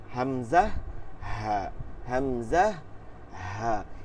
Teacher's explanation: 1 নম্বর মাখরাজ হলকের শুরু হইতে হামজা হা